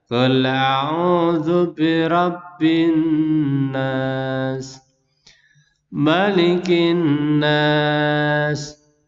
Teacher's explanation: karena di sini ada nun tasdid, jadi membacanya sedikit ditekan.